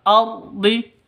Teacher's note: Ra-nya ra tafkhim, ra tebal